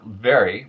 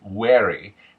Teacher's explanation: The V turning to a W sound.